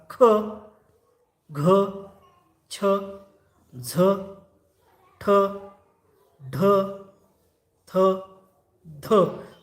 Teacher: ज्या वर्णाचा उच्चार करताना ह ची छटा येते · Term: महाप्राण वर्ण